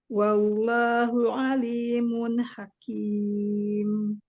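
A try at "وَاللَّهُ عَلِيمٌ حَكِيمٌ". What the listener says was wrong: Lagi ismul jalalahnya tebalkan lagi. Wallahu alimun hakim.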